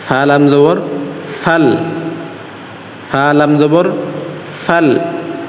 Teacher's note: সামনের আমাদের সামনের দাঁত আছে এই দাঁত সামনে দুই দাঁত আছে এই দুই মোটা দুই দাঁতটা নিচের ঠোটের পেটের সঙ্গে লাগবে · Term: মাখরাজ